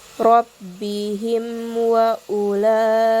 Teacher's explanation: waw, sehingga cara bacanya pun harus jelas. Jadi rabbihim wa ulaika, mim dari huruf mim ke wawunya itu jelas tanpa adanya dengung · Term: idhar syafawi